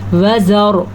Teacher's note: रॉ को पूर करके पढ़ना है